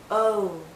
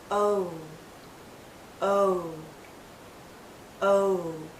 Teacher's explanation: as we come to the end of this vowel sound our lips become even tighter it finishes actually with a slight oo sound